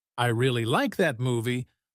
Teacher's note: in the sentence, I really like that movie, the word really is stressed because it's important